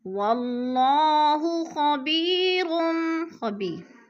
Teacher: یا ساکن سے پہلے با کے نیچے زیر ہے تو ادھر یا مدہ، یا مدہ کو ہم نے 1 الف 2 حرکات کے برابر کھینچ کر پڑھنا ہے۔